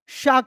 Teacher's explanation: शक्कर वाला जो श है इसको तालव्य श भी कहा जाता है क्योंकि इसका उच्चारण स्थान तालु है